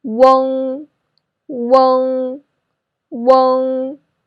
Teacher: the first vowel is wu, so remember to put your mouth rounder when you pronounce it.